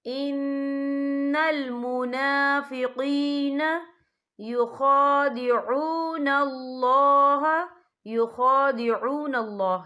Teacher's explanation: یا ساکن ہے، یا ساکن سے پہلے زیر ہے تو ہم یہاں 2 یا 3 حرکت کے برابر کھینچ کے پڑھیں گے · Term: یا مدہ